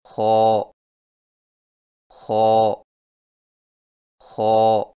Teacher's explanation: خو کی ادائیگی میں زبان کی جڑ کو تالو کی طرف بلند کرتے ہوئے موٹی آواز میں پڑھیں، یعنی خو خو خو۔